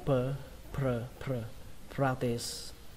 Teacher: Các bạn nhớ là pr, pr các bạn nhé, practice. Âm p đây là bắn hơi